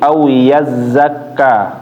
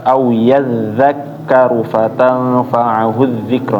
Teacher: Za ujung lidah di gigi seri atas ya, seperti menggigit dia. Yaitu tarful lisan ketemu gigi atas, au yadzakkaru fatanfa'ahu dzikra.